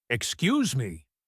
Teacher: If someone insults you, you might say, excuse me, with a rising intonation.